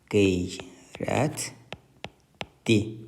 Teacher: Göründüyü kimi l samiti D kimi tələffüz olundu